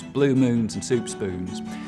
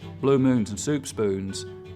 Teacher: other southerners is that there's a lot less goose fronting so the tongue stays further back through that whole vowel sound instead of coming forwards